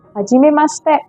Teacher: When the Japanese say it, it is pretty fast. So the she sound in hajimemashite sounds like sh